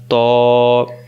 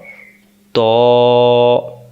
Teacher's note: ত অক্ষর জিহ্বার আগা থেকে মোটা করে পড়তে হয়